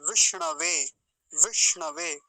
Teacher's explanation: विष्णवे मूर्धन्य सकार है बीच में